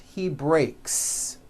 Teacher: the S you add also remains unvoiced.